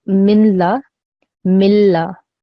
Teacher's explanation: a noon second that means when we say this whole word this noon sound will not be produced it will become silent